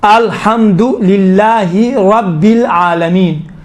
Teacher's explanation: یہ را تھوڑا سا موٹا پڑا جاتا ہے